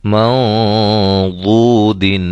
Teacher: یہاں نون ساکن کے بعد حرف ضاد ہے، اور ضاد حروف مستعلیہ میں سے ہے، موٹے حروف میں سے ہے، لہذا اخفا بھی ہم موٹا کریں گے۔